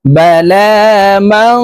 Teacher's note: নুন সাকিনের পরে ইকফার হরফ কাফ আসছে তাই এই নুনকে নাকের ভিতরে লুকাইয়া গুন্নার সহিত পড়বো